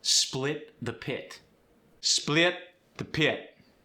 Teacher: When you're stressing the short I, it gets the ia sound.